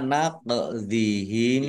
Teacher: qaf sukun bacaan qalqalah dibaca memantul ditambahkan pantulannya